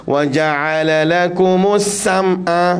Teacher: Pastikan ain di sini bunyi macam Arab, tak nak bunyi ke hidung. Wa ja'ala lakumus sam'a, tak nak.